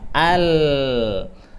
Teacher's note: dari sisi suara dari sisi suara Nah contoh huruf lam Al dia lewatnya dari samping-samping apa samping lidah gitu ya